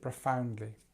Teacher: it tends to have the stress on the second syllable. So we have the schwa here, like we always do, and we have this ow sound, profoundly, and we have our ly at the end, profoundly, profoundly.